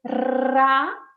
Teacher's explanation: En cambio, para hacer ra, la lengua está allí vibrando, la punta de la lengua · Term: R múltiple